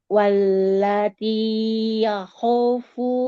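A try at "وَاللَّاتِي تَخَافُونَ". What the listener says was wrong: Pan ya? Ta. Wallati takhafuna nusyuzahun.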